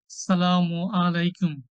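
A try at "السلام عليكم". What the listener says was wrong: আমরা আসসালামু আলাইকুম যখন বলছি তার এর মধ্যে একটা আইন আছে। তো আইনটাকে আইনের মতনই উচ্চারণ করতে হবে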